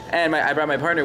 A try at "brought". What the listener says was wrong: It sounded like you said eyebrowed. Brout. Eyebrowed.